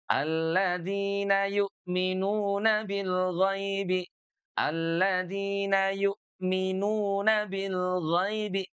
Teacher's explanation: huruf ghain keluar dari, tenggorokan bagian atas atau dikenalnya dengan tenggorokan terdekat